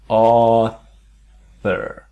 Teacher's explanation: So it's that soft author. So aw, and the th is the tongue very light on the teeth.